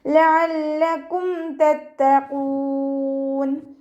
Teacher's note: ഖാഫ് ഇസ്തിഅലാൻ്റെ ലെറ്ററാണ്, തഫ്ഹീം ചെയ്യുക